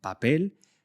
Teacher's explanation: Puedes producir los sonidos nuevos como esa P menos explosiva en papel